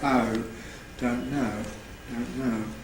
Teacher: the possibility of centralizing the second element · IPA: [ɐʊ̈]